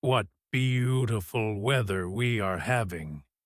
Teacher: He will probably say it with a flat, dead voice, or he might stretch out the word beautiful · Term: sarcasm